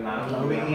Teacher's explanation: German speakers are likely to start this vowel further back, which gives the impression of a deeper sound. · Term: mouth vowel